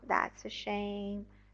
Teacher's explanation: in responding to bad news the intonation goes down